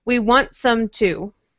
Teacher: It doesn't sound like there's a T there at all.